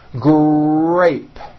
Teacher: in the word grape the r sound is stronger and you even hear it more than the G sound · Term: R Blends, R blends